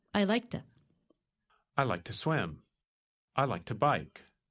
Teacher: When we say it quickly, the word to is pronounced ta.